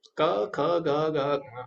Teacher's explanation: क वर्ग के जो व्यंजन होंगे उनका उच्चारण किया जाता है कंठ से क ख ग ठीक है तो य कंठ से ये शब्द